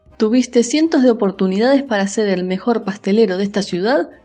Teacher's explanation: Adicional a esto, se tiende a aspirar la S al final de las sílabas o al final de las palabras, haciendo que la S produzca un sonido más glotal, es decir, como si la S estuviera aspirada como una H.